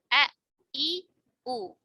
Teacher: huruf hamzah tidak ada aliran nafas karena tadi ya pita suaranya tertutup